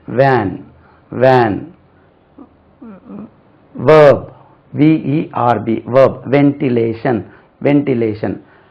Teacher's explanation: இந்த V வரும்போது உங்களுடைய மேற்பற்கள் உங்களுடைய கீழ் உதட்டில் பட வேண்டும்